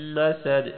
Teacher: میم پہ غنہ ہوگا، دال پر آخر میں قلقلہ ہوگا